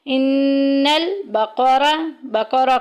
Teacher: بقرہ کی را کو ہم نے موٹا ادا کرنا ہے کیونکہ اوپر زبر آ گئی